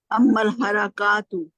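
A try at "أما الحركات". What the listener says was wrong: پھر کا نہیں، حرکت. دیکھیں حرکت اور حرکات میں فرق ہے نا، بتائیں کیا فرق لگایا تو زبر ہے لیکن پڑھ نہیں نہ رہی زبر، پڑھنے میں کھڑا زبر پڑھ. دیکھیں حرکت اور حرکات فرق ہے.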